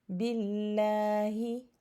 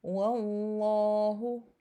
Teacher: if the word Allah is preceded by a letter with a fatha or a dhamma, then the lam in the word Allah will be pronounced with a full mouth, meaning heavy